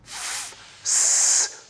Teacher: when we restrict the flow of air as in f producing a chaotic noisy sound